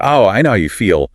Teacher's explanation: Stressing feel to emphasize the shared emotion.